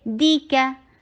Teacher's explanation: جتنا دی short اتنا کا شارٹ، کاف کو لائٹ رکھیے